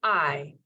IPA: ɑɪ